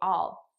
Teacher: notice how i'm actually saying all which is the unstressed pronunciation